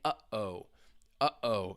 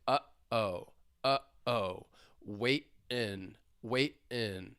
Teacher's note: that is a glottal stop. You can hear it closing.